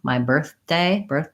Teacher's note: going from the TH to the D, my birthday, is that the TH sound gets a little bit stopped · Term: D sound